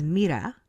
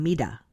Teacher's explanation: when I roll my R's, they think I'm pronouncing it like a D.